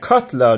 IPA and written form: ˈkʰahtla (Katla)